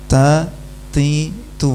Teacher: Yang salah kalau ta ti tu tanpa desis itu salah ya. Harusnya ada desisnya.